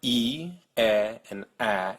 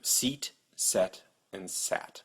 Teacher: a in English as in seat set and sat you'll notice your tongue starts up high e then goes to the middle of your mouth e and then goes down to a so your tongue can go up and down you can also